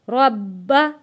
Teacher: با کے اوپر تھوڑا سختی کے ساتھ رک کر ہم نے با کو پڑھنا ہے کیونکہ تشدید والے حرف کو سختی کے ساتھ تھوڑا رک کر پڑھتے ہیں۔